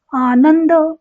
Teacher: अनुस्वाराच्या ऐवजी त वर्गातल शेवटच न हे अनुनासिक येईल आणि त्याच लिखान आणि उच्चार आनंद असा होईल म्हणजे अनुस्वाराचा उच्चार